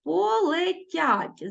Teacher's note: е в нас без наголосу тому ми відчуваємо і дописуємо вимові у слові полетять е наближається до и